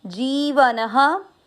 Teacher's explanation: न में अ की मात्रा तो विसर्ग को पढ़ेंगे ह